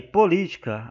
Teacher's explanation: o acento está no Li e portanto Essa é a sílaba tônica